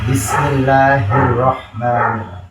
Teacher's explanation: Terus mim di bibir juga, mim. Bismillah, ha di tenggorokan paling bawah